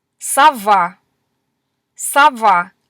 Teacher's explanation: notice that o is becoming an a sound because it's not stressed